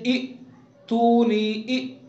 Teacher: यानी हमज़ा के अंदर जहर पाई जाएगी, यानी हमज़ा को अदा करते वक्त आवाज़ के अंदर बुलंदी होगी। आवाज़ जब हमज़ा को अदा करेंगे तो आवाज़ इस तरह बंद हो जाएगी कि सांस एकदम बंद हो जाएगा